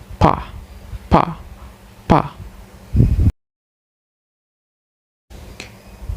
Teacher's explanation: we have to move our two lips together tightly and then blocks the airflow for a moment. After that, we have to release the air pressure suddenly in the mouth, which causes plosive sound like pa, pa, pa.